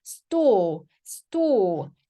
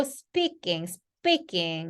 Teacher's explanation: S 뒤에 t나 p나 크가 오면 된소리.